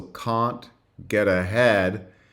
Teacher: So there's a flap along with the British vowel.